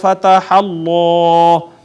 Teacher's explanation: اس میں جلالت کا ماقبل مفتوح ہے، اس میں جلالت کو مفخم پڑھیں گے